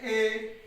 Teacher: अर्ध समृद्ध जिनके उच्चारण में मुख द्वार कम सकरा होता है